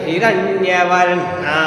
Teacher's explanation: हिरण्य ऊंचा जाना चाहिए